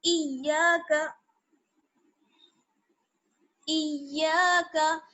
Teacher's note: इय्याका, इय्याका, हमजा या ज़ेर ई, या अलिफ जबर या, इया, इया, काफ जबर का, इया का, या पेश देखिए तशदीद है इसलिए जमा के पढ़ेंगे